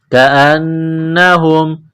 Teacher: نون مشدد ہے غنہ کریں گے، آواز ناک میں چھپائیں گے